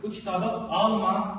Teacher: vurğusuna görə də >> mənası dəyişən sözlər məsələn alma sözü deyirəm ki, alma dadlı ili vurğu sona düşür bu kitabı alma vurğu əvvələ düşür